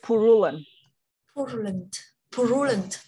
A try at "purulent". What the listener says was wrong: No, sorry, it's actually stressing on the first one. It's purulent. The P actually go with the O.